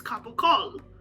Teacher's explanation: the sicilian equivalent is capocol with a reduced vowel